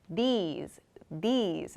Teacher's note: these so it's like i'm smiling when i'm making this sound so my tongue begins against my teeth and then i move to an e sound these i make the sound when i release my tongue from